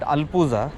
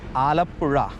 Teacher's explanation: Again the ZH comes, which is R. It's not Z, it's R.